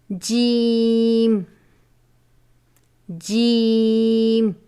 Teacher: زبان کے درمیان اور تالو کے درمیان سے ادا ہوتا ہے